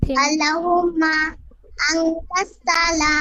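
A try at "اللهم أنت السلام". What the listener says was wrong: কেন থেমে থাকেন বলবেন আমাকে একটু? আর থামবেন না।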